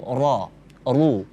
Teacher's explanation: Ketika dia berbaris fathah atau dhamma seperti ra, ru, tebal. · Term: tafkhim tebal